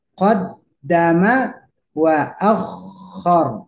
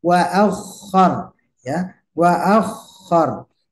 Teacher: Nah, ini jangan sampai kurang tasdidnya, khususnya untuk kho ya